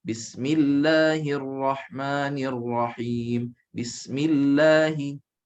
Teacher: Dibaca lam ismul jalalah dibaca dengan nipis, tarqiq.